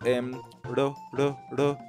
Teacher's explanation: una vibrante simple sería una sola vibración y ya está